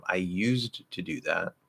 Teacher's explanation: we're very likely to actually change that D into a T